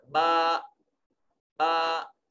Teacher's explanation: ہونٹوں کا وہ حصہ جو تری والا ہے وہ آپس میں ملتا ہے، جبکہ الف کی وجہ سے منہ کے دونوں جبڑے جو ہیں وہ کھل جاتے ہیں اور آواز درمیان سے خالی حصہ سے ادا ہوتی ہے۔